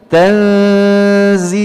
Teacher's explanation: Ya, jadi tanzila tidak dibaca demikian, tapi dibaca tanzilal, ya, dibaca ikhfa hakiki, ya, dengan ditahan 2 harokat, ya, dengan dengung dalam khayshum